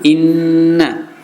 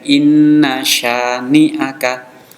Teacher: Inna sya, jangan sampai inna sya, itu salah ya. Yang benar pendek. Inna syani'aka, syanya panjang, matobi fathah bertemu alif.